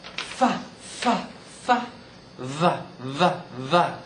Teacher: f is voiceless V is voiced f- f- f- v-- v-v but they're the same production lip · How we produce it is top teeth to bottom lip. So they call those labiodental.